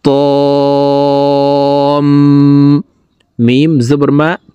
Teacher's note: ত কে চার আলিফ টেনে তাসদিদ ওয়ালা মিমের সাথে গুন্নার সহিত পড়ব